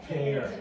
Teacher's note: So in English the P at the start has aspiration.